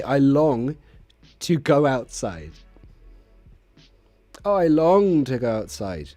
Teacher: But notice how I emphasize the word long.